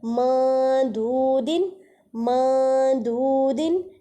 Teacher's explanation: نون ساکن کی آواز کو ناک میں چھپا رہے ہیں، مطلب اخفاء کر رہے ہیں۔